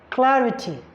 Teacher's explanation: the primary stress falls on the third syllable counting from the end for example you have Clarity the primary stress force on CL